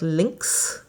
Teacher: at the end of a word like lynx, it makes sort of a x sound, which is almost like a KS together